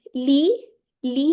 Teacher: ये कसरा को अब ले करके नहीं पढ़ना, मजहूल नहीं पढ़ना, डबल ई की साउंड आ रही है ना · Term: मद असली